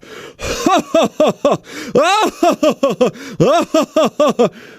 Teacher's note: I'm letting a lot of air out on the H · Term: Belly Laugh